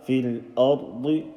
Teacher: Remember this lam sakin sound, ra full mouth, but don't say fil ard, and then di.